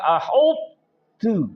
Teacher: تو کی صفت استعلا یعنی موٹا ہونا باقی رکھ کر بغیر قلقلہ کیے ہوئے تا میں ادغام کرنا ہے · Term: ادغام متجانسین ناقص